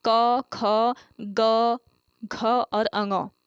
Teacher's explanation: ये व्यंजन है आपके कंठ्य व्यंजन, यानी कि कंठ से इनका उच्चारण किया जाता है।